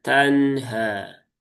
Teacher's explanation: Jadi dia dialirkan sedikit karena tawas itu kan dia pertengahan ya baina-baina ya pertengahan antara syiddah dengan rakhaah. maka dia tidak tertahan dan juga tidak mengalir dengan sempurna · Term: tawasudnya